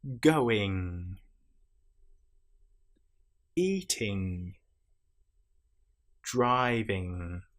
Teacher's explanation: You will feel the vibration in your nasal cavity again in the middle of your head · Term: nasal sounds